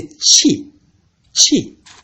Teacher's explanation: The first tone, abrupt tone, when you are very angry, you say qi.